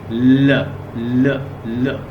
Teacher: अच्छा, ये साउंड भी है लिटरल is a production of the लिटरल spirant. This is a complete closures in the centre of the vocal track and air passage through the side of the tongue. ल in the English, जब साइडों से आपको feel हो एयर्स, वो कहता है कि साइड ऑफ द टंग्स, टंग की साइड, अंदर जो हमारी ज़बान है इसकी साइडों से जब हमें फील हो, तो फिर क्या होगी, लिटरल साउंड।